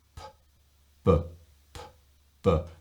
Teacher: no vibration on the p and some vibration on the b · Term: voiced consonant